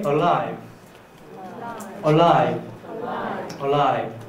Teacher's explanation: So you have to touch the alveolar ridge, and then don't lower the tip of the tongue, and then breathe in the other way.